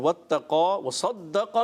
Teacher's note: صاد کو پر رکھنا ہے, قاف کو ہی پر رکھنا ہے